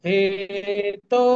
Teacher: হে এবং তো দুটোই দীর্ঘ, বিসর্গের পরিবর্তে আমরা খয়ের মতো উচ্চারণ করব